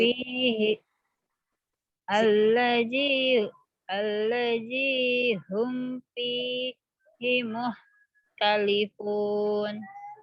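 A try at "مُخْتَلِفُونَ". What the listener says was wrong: ya, muhnya ini khoknya agak seret tenggorokannya. Muh, muh.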